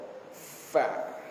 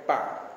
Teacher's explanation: Bibir kita, bibir bawah kita mesti masuk bawah gigi kapak. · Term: huruf fa